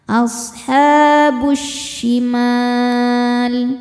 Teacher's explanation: Kemudian ada alif lam syamsiyah karena alif lam menghadapi huruf syamsiyah yaitu shin. Cara bacanya alif lamnya lewat, masuk langsung ke shin, diidghamkan, idgham syamsi